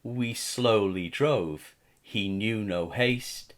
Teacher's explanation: the elongated vowel sounds o and a make us read this line slowly to take our time and to contemplate the speaker's slow Journey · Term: assonance